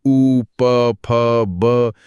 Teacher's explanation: ओष्ठ्य, लेबियल्स जो आवाजें होठों की मदद से बनती हैं। जैसे उ, प, फ, ब ये तो बिना होठ मिलाए बोल ही नहीं सकते?